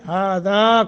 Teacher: آگے الف ہے، ہذا کر کے 1 الف کے برابر مد